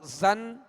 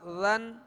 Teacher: زا کو سختی سے سیٹی کی آواز اس میں پیدا ہوگی اور ذال کو نرمی کے ساتھ ادا کریں گے